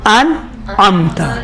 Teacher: حمزے میں جھٹکا ہے اور سختی ہے، نرمی ہے آئین اور نرمی ہے اور بدون جھٹکا آئین میں.